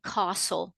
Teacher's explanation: It's got the letter L in it, but you don't hear it. We just say castle. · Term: silent letters